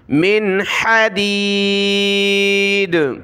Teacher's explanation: نون پر ناک میں آواز پیدا نہیں کرنی کیونکہ آگے حا حروف حلقی کا حرف ہے